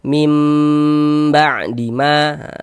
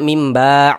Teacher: Nah, kita baca mim ba'di ma, kemudian didengungkan. Nah, jadi di bagian mimnya itu suaranya itu kita tahan, kita panjangkan sejenak sepanjang 2 harokat, kita tahan.